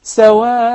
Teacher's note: I said there should be مد عوض. Instead of التنوين, I will give natural مد حركتين.